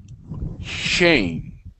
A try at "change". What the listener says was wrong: Okay, so with the CH sound, when we pronounce the CH sound, it's a little bit different, okay, than the SH sound, okay?